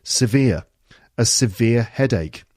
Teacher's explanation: 2 syllables. Veer, the second syllable, is the stressed one.